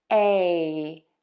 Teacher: your mouth is open wide and then moves to kind of a smile. And your tongue moves from having the tip be low to higher in the mouth behind the top front teeth, but it's not touching. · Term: long A